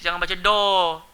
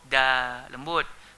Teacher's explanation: Nipis, jangan baca do. Da, lembut.